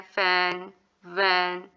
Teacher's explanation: for example जब हम sound निकालते हैं फुल साउंड निकालते हुए और वी साउंड निकालते हुए हमारे जो है जो लोअर लिप है वो टच करता है हमारे अपर टीथ को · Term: लेपोडेंटल, लेबियोडेंटल